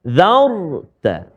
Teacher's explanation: selepas huruf za ada huruf ra pula, tebal ra tu.